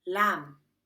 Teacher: by sealing your lips but don't press or Puff example Lamb with words like lamb we Mark the B but we don't puff it or finish the sound example lamb we don't say lamb or lamb we just mark